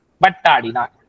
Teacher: நிலைமொழியில் உள்ள உகரம் கெட்டு வருமொழியில் உள்ள உயிரெழுத்து நின்று மெய்யுடன் இணையும் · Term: குற்றியல் உகர புணர்ச்சி